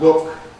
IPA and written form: lʊk (look)